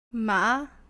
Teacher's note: Rising tone from low to high.